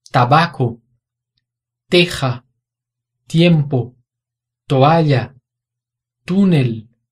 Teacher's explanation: O T nessas palavras tem som de ta, te, to, tu, t, e não tch. Em espanhol, o som é sempre esse.